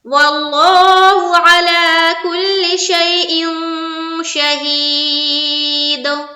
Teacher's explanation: लफ्ज अल्लाह का लाम को क्या करना है, पुर करना है, और आयन को जल्द पढ़ेंगे, जबकि लाम को खींचेंगे।